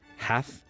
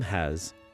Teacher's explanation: The th of some verb forms changed to s. Hath became has, and loveth, loves.